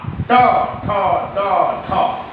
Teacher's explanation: टवर्ग का उच्चारण स्थल है मूर्धा, ट, ठ, ड, ठ, मूर्धा जो उच्चारण स्थल है वो मूर्धा है।